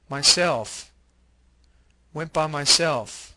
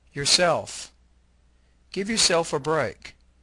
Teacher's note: stress the self part of reflexive pronouns.